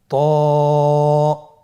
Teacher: জিহ্বার আগা, সামনের উপরের 2 দাঁতের গোড়ার সঙ্গে লাগিয়ে উচ্চারিত হয়।